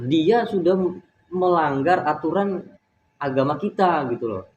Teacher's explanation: intonasi nada suara yang kita gunakan itu pasti tinggi sedikit, seperti menyentak seperti itu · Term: intonasi yang tinggi